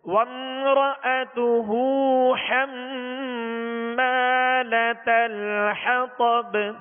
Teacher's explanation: با پر قلقلہ کریں گے، یعنی آواز میں جنبش ہوگی، آواز لوٹتی ہوئی محسوس ہو